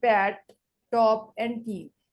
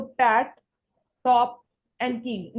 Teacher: They are the aspirated because they are pronounced with an accompanying forceful expulsion of air.